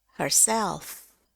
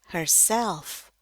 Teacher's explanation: Jadi yang mendapat tekanan utama itu adalah self. Jadi nadanya turun dulu, turun naik, herself